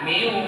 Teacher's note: Maka idgamnya harus pakai dengung, harus pakai gunah. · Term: idgam maal gunah